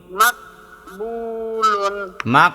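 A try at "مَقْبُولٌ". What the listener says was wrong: কলকলা করেন না কেন? মাকবুলুন।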